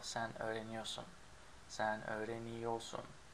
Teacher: in spoken language, we don't pronounce the R in ior in most cases, like for sen, the second one, sen öğreniyorsun is usually pronounced without the R.